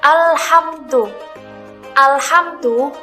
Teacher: cara membaca alif lam Qariah lamnya dibaca jelas dan tidak mendengung